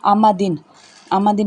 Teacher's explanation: آمدن میں میم ہے، میم دونوں ہونٹوں کے خشک حصے سے ادا ہوگی